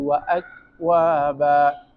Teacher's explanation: پہلے آواز بند ہو جاتی ہے، شدت کی صفت آ جاتی ہے، پھر فوراً کیا آ جاتی ہے، حمز کی صفت آ جاتی ہے